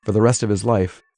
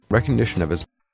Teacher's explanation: Here that of his sounds like [oviz].